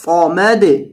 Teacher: اور صاد کو موٹا کریں گے، سمد نہیں صمد، صمد یعنی صاد پر کر کے پڑھا جاتا ہے۔